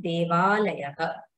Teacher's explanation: Beginning of alayaha, there is an akara. So instead of an akara and akara, in devalayaha, we have only one dirgha a. So there is instead of akara and akara, we have one akara.